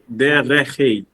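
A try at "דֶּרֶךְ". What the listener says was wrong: But the shva tells us to stop with the ch. So it's derech. Just derech.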